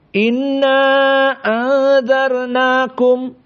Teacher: Perlu diperhatikan pertama dari segi usul qiraah wars, inna angdarnakum dibaca al-isba jadi panjang. Maka jumhur hanya sampai 4 tawassut.